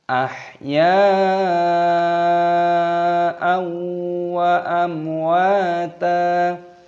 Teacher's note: Di sini dibaca mad wajib mutasil, dipanjangkan 6 ketukan.